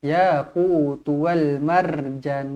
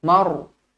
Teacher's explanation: Ra dibaca tebal kerana sebelumnya berbaris atas.